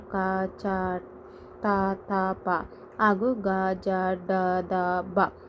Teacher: First one ನಾವು ಅಲ್ಪಪ್ರಾಣದ ಬಗ್ಗೆ ನಾವು ನೋಡೋದಾದರೆ ಕಡಿಮೆ ಉಸಿರಿನಿಂದ ಉಚ್ಚರಿಸಲ್ಪಡುವಂಥ ಅಕ್ಷರಗಳನ್ನು ನಾವೇನಂತ ಕರಿತೀವಿ? ಅಲ್ಪಪ್ರಾಣಗಳೆಂದು ಕರಿತೀವಿ. ಫಾರ್ ಎಕ್ಸಾಂಪಲ್, ಕ, ಚ, ತ, ಥ, ಪ ಹಾಗೂ ಗ, ಜ, ಡ, ದ, ಬ.